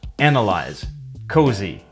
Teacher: the S is voiced. In other words, it makes a Z sound.